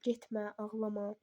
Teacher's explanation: Bir də felin inkar şəkilçisi ma var ha. Həmin ma deməli vurğu qəbul eləmir.